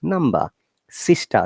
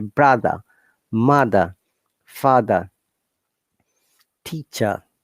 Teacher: in british accent or british english we don't pronounce r in many cases especially if it is at the middle of the word at the end of the word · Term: non-rhotic nature